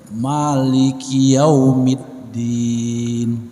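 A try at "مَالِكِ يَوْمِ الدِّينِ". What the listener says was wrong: Huruf lam masih lemah. Bukan maliki yaum.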